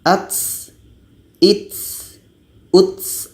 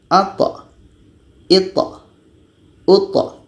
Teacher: Kita baca dengan at, ita, uta. Ketika tha ini berbaris sukun atau mati, sifatnya qalqalah, bukan hamas, bukan berangin. Jadi kalau sifat hamasnya seperti ini, ats, its, uts, itu salah.